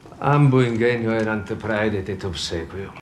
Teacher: I even hear what sounds closer to a retracted S in his obsequio. Obsequio, tiny problem, he says obsequio, the longer E pronunciation.